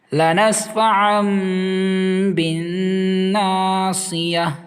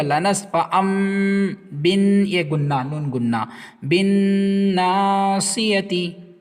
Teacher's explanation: تنوین کے بعد با آیا، اس لیے تنوین کو میم میں بدل دیا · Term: اقلاب